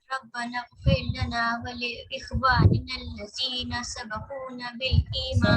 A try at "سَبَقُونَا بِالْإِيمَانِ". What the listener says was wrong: سبقونا نون الف زبر نہ لمبا کریں گے. سبقونا بالایمان.